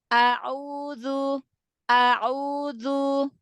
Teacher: huruf hamzah dengan huruf ain kan sama ya, makhrajnya tenggorokan ya.